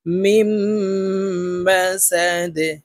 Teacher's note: মিম, মিম জবর মা, সিন জবর সা, মাসা, দাল দুই জের দিন, মাসা দিন, দালকে ওয়াকফের ক্ষেত্রে সাকিন করে ফেলবো, দাল কলকলার হরফ নিচের দিকে ধাবিত করে ধাক্কা দিয়ে উচ্চারণ করব।